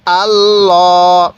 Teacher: দেখুন লামটা কিন্তু আমি পোর করে পড়ছি, অর্থাৎ মোটা করে পড়ছি। কেন? আল্লাহ শব্দের এই যে মাঝখানে লামটি দেখতেছেন, এই লামের পূর্বে যদি এরকম জবর থাকে, তাহলে এই লামটিকে মোটা করে পড়তে হবে।